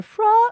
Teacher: Notice the vowel on the from is quite narrow. Fr. And she's actually getting quite an odd placement in there, but it's not spread.